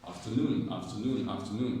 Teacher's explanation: So when you see this word, the stress is on noon.